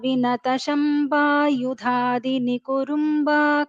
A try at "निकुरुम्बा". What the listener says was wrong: You pronounced it as Nikurumba. It's not Nikurumba, Nikuramba. It is correctly, it has been corrected already. So it is Nikuramba, not Nikurumba.